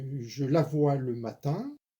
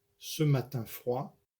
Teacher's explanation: Alors par exemple ici, je la vois le matin, ce matin froid. Eh bien, la syllabe tin du mot matin est accent tonique dans le premier syntagme et ne l'est pas dans le second, car ici froid détermine la limite du groupe nominal.